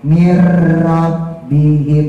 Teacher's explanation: cadel tapi jangan dicadelin agak cadel bukan berarti dicadelin ya jadi ujung lidahnya ditaruh di langit-langit yang keras jadi getarannya tidak lebih dari dua ya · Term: rnya hijaiah